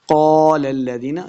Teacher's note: اس قاف کو موٹا پڑھیں گے، پہلے لام کو دوسرے لام مشدد کے ساتھ ملا کے پڑھنا ہے۔